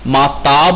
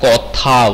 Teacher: কিংবা এখানে দেখো লক্ষ্য করে, দুটি ঘোষ ধ্বনি এখানে, আর এখানে দুটি অঘোষ ধ্বনি, কিন্তু একটা মহাপ্রাণ, একটা অল্প প্রাণ। ত অল্প প্রাণ, থ মহাপ্রাণ